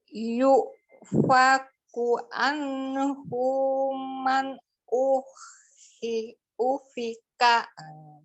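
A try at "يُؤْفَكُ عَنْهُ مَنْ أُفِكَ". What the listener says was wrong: Oke, diwakaf aja ufik. Tapi anhu, hu-nya satu harokat saja. Coba lagi.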